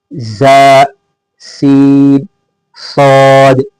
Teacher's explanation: زبان کی نوک کو نیچے کے 2 دانتوں کے کنارے کے اندرونی حصے سے اس طرح لگائے جس طرح تصویر میں نظر آ رہا ہے، پھر اوپر کے دانتوں کو نیچے کے دانتوں سے نرمی سے ملائے جس طرح اس دوسری تصویر میں نظر آ رہا ہے، پھر سیٹی کی آواز سے ان تینوں حروف کو ادا کرے